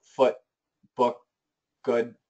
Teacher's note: Once again, everybody, the short double O is essentially a schwa.